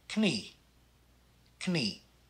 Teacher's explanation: the kn blend we pronounce both the k and the n